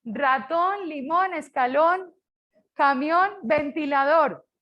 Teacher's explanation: Rubén, palabra bisílaba y tiene la sílaba tónica en la última, o sea, aguda también